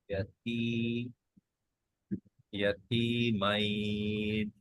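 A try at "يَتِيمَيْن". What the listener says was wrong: আরেকটু লম্বা করি, মাইন 3 হয়েছে ধরো। ইয়াতিমাইন।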